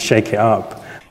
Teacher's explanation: among younger speakers of rp t glottalization can also be heard finally before vowels